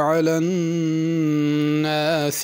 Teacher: علی میں عین ہے، اس کو حمزہ نہیں پڑھنا